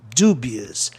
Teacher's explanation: Proparoxítona terminado em OUS. A sílaba tônica fica em DU.